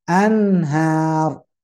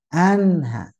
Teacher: An tetap masuk hidung, cuman tidak ditahan.